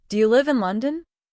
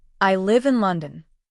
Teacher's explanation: Here, your voice rises at the end, especially on the word London. That rising sound tells the listener you are asking a question and expecting an answer. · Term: Rising tone